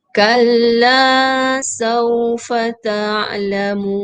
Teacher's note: Sebab ada waw, jadi mad arid disukun di situ jadi panjang sikit baca.